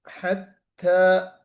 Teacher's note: تا کوشش کیجئے بڑی نفاست کے ساتھ تا نکلے، ہلکا سا ہمس بھی نظر آئے اس میں سننے کو ملے